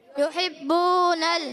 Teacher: یحبون یہاں پر پیش ہے، اور ہا کی جو زیر ہا ادا ہوتا ہے الگ کے درمیان والے حصے سے. ہا کو با سے ملائیں گے، با مشدد ذرا رک کر ادا کریں گے. با واو پیش بو، واو مدہ ایک الف کھینچنا ہے. · با واو پیش بو، واو مدہ ایک الف کھینچنا ہے. نون کی زبر کو لام سے ملائیں گے، لام کو ہلائیں گے نہیں